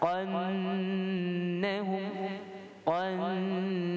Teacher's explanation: kita nak baca huruf qaf, kita tebalkan qaf dengan fathah, qannahum, qannahum.